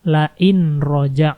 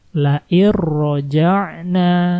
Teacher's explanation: Jadi, nun sukun dan tanwin di sini menghilang dan langsung dimasukkan ke dalam huruf 'ro'. " Lar-roj'na" seperti itu, kan.